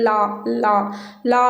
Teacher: மேல்வாய் பல் அடியை நாவின் ஓரமானது தடித்து நெருங்க லஹாரம் லகாரம் ஓகே லா லா லா அப்படின்னு சொல்லும்போது பாருங்க அந்த நாவின் ஓரம் வந்து